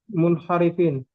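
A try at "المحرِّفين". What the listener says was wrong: Nggak ada nunnya. Kirain nun yang belakangnya. Muharrifina. Dari kata harrofa yuharrifu. nggak ada nunnya.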